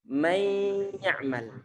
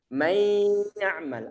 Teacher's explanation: Di saat antum menahan suara may ya'mal, hidung antum ada getaran di sini. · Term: gunnah